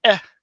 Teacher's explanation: What he means is if you just say an E sound, you say eh. You still have that glottal stop, that thing in the back of your throat.